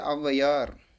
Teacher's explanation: 2 மாத்திரையிலிருந்து சற்று குறுகி ஒலித்தது அவுகார குறுக்கம்.